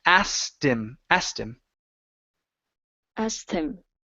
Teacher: you're combining the T sound that the ED makes, and you're combining it with the word him. Okay, dropping that H.